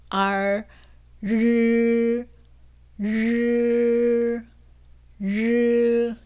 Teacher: 혀 양옆은 그대로 붙여놓고 혀 끝만 붙였다가 떨어지면서 소리를 냅니다. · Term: 권설음